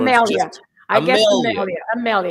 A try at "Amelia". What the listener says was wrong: Yes, not Amalia, but Amelia.